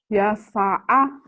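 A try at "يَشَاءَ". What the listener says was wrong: Gak ada yang panjang. Ya Ya sya'a. Nih, keliru baca panjang pendek adalah kesalahan besar.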